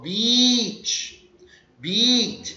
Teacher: quando for pronunciar praia, estenda o som EA, que soa como I.